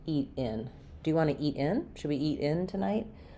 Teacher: So, when I say eat in, my in is going to be stressed and I'll have a little bit of a break there. · you'll hear eat unreleased, and then the stress goes on the in part of the word or of the phrase, eat in. Should we eat in, or have you already eaten?